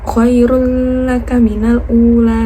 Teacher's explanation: Jadi didengungkan, dimasukkan dengan huruf la yang bertasdid. Khairul laka minal ula. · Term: idgham bila khuna